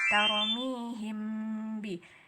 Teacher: Ini dengung dua harkat itu dua ketukan, 1, 2 gitu ya. Jadi namanya ikhfa syafawi karena dia mim mati bertemu dengan ba.